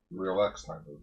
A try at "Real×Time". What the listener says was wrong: Well, you don't pronounce the X, it's like Hunter x Hunter.